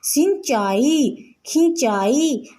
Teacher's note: इसका उच्चारण हमारा मुख और नासिका दोनों के कारण हो रहा है। अनुनासिक की ध्वनि इससे निकलती है।